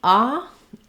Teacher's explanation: it's similar to the ah we have in father it's gonna be perhaps a little shorter